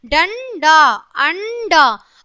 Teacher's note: अंग अनुस्वार है। इसका उच्चारण नाक से किया जाता है। इसे अनुस्वार या बिंदु कहते हैं।